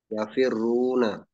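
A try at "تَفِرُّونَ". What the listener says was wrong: ta pakai ta ya. Tafirruna, dikasih jeda dulu. Roknya itu, jangan langsung tafirruna. Tafirruna, biar terasa sukunnya dulu roknya itu ya. Tafirruna.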